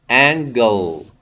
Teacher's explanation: Angle, dark L at the end of the word